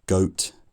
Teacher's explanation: so for the vowel I'm going from uh to O I'm rounding my lips more as the bowel goes on uh